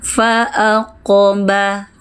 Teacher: Huruf qof seharusnya memantul, itu adalah huruf qalqalah. Fa aqoba. Nah , pantulannya ringan saja, jaga agar tetap tebal. · Memantul ringan saja, tetap tebal. Fa'aqaba, tetap diangkat pangkal lidahnya.